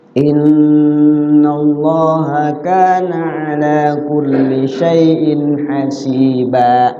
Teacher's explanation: Lafzul Allah, lafzul jalalah dibaca tafkhim. · kulli syai'in tanwin ketemu ha, idhar dibaca nggak boleh samar, harus jelas. Syai'in kasrotainnya dibaca jelas.